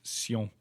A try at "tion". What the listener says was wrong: Yes, this ending in T-I-O-N. And you're not the only one to make that mistake, because it looks like something that exists in English, and typically in English you say sion. Tradition. So tradition, attention, station. So you say that T-I-O-N in English you pronounce Sean, or whatever.